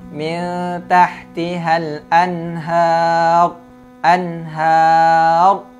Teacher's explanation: anhar จะต้องพองปากนะ แล้วก็ให้ได้ยินเสียง ra ด้วยนะครับ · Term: ra tafkhim